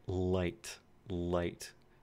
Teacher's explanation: There's way more airflow through the sides of the tongue to make light. And this, of course, is the L sound. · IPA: [l]